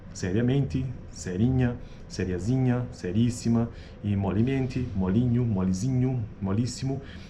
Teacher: Em todos esses exemplos, uma vogal média-baixa, EO, ocorre.